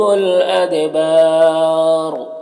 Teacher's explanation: ادبار، دال میں قلقلہ ہو رہا ہے اور با میں الف مدہ ہے، اور وقف کی صورت میں را کا زبر سکون سے بدل جائے گا تو پھر مد عارض وقفی ہوگا اور را کو پر پڑھیں گے